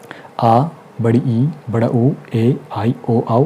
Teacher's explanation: ठीक है, उसके बाद जो दीर्घ स्वर आपका होता है, इनके उच्चारण में ह्रस्व स्वर की तुलना में 2 गुना समय लगता है।